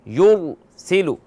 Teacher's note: ٹھیک ہے نا، را کو موٹا پڑھنا ہے. سین باریک ہے، ٹھیک ہے نا، سین کو موٹا نہیں پڑھنا، را کو.